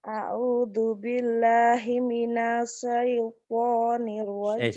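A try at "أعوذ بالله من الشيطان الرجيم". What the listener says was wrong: Lupa Himinash sinnya. A'udzu billahi minasy. Ayo sin.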